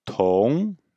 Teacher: bien expirer, bien faire une petite explosion d'air pour le T, et bien bloquer après pour le ONG